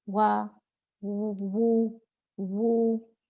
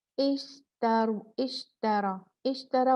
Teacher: वाव मदिया पीछे का हिस्सा जुबान की जड़ ऊपर उठेगी और हम उसको मुंह को गोल करेंगे, क्योंकि कभी भी हम वाव या पेश पढ़ेंगे हम अपने मुंह होंठों को गोल जरूर करेंगे।